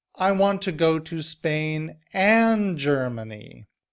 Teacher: so I answer I want to go to Spain and Germany the word and is a conjunction and that's one of the function words however I'm putting the stress on it to emphasize that I don't want to have to choose between